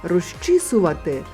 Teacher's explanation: Ж максимально наблизився до ч. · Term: компроміс